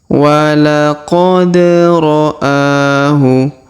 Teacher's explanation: Huruf da berharokat sukun maka kita pantulkan atau kita qalqalahkan.